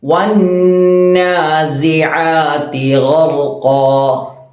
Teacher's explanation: ആദ്യം വന്നാസിആതി അവിടെ ഐന വരുന്നത്, ശേഷം ഗൈനാണ് വരുന്നത്. ഐനിന്റെ മഖ്റജ് തൊണ്ടയുടെ മധ്യഭാഗവും ഗൈനിന്റെ മഖ്റജ് തൊണ്ടയുടെ തുടക്ക ഭാഗവുമാണ്. വന്നാസിആതി മാത്രമല്ല ഐന് എന്നുള്ളത് തർക്കീക്കും ഗൈൻ എന്നത് തഫ്ഖീമും ആകുന്നു.